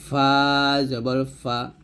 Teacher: ফা টা হবে উপরে দুই দাঁত নিচে ঠোঁটের পেটে লাগে